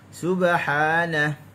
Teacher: cukup untuk sin kita muncung, ba dia ada qalqalah. Lantunan berlaku dengan cepat.